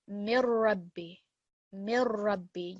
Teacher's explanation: You can hear in that none of the noon comes through from the noon sakin.